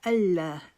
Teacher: اس کو ان لا ہی نہیں پڑھے، ان نون کی آواز نہیں آئے گی